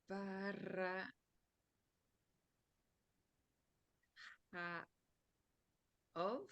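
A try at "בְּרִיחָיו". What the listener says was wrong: Here it doesn't have an O sound. It's berichav. Berichav.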